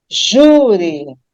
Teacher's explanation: Quando eu pronuncio júri, eu percebo que a sílaba tônica agora não é mais a última, não é juri, já vai ser a penúltima